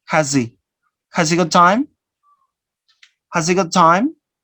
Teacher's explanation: you omit the sound ha, and you link this